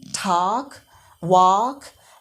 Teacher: in American English it's a ah sound